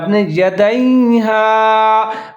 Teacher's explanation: یہاں پر دال کے بعد یا آ رہا ہے یا ساکن ہے، تو دونوں کو ساتھ میں ملا کے پڑھیں گے